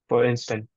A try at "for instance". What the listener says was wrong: Yeah, where was the S?